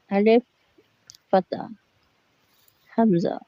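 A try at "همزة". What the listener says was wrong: Alif, no alif. It's Hamza.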